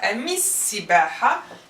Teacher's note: sin, sun letter. We will top it with the shadda. We won't pronounce the lam.